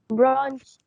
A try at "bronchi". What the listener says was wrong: برونكاي. مش أنا قلت لك دي كأنها كي؟ برونكاي.